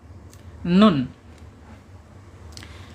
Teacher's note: ujung lidah menyentuh langit-langit atas depan ya, mendekati pangkal gigi seri ya